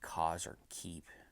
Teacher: You kind of close up the back of your tongue to the top of your throat, and that causes the sounds with a closed throat.